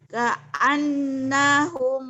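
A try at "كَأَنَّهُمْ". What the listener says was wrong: Nanya masih salah. Ka'annahum masih ketahan. Kalau benar gini, ka'annahum. Nanya pendek. Ka'annahum.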